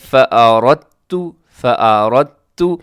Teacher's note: اس میں بھی آپ نے دال نہیں پڑھنا بلکہ را کو تا کے ساتھ آپ نے ملانا ہے